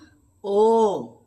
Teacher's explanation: আমাদের দুটো ঠোঁট একসঙ্গে লাগবে না কিন্তু মুখটা মুখের যে চেহারাটা সেটা গোল হয়ে শ্বাসটা বেরিয়ে যাবে